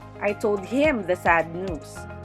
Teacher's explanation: the emphasis is on him the receiver of the news